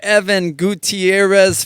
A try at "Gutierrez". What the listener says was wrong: you can roll the R's. The Gutierrez way, like saying it that way, is like the whitewashed.